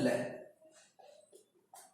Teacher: व्यंजन का उच्चारण करते समय जिह्वा के आसपास से हवा निकल जाती है। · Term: पार्श्विक व्यंजन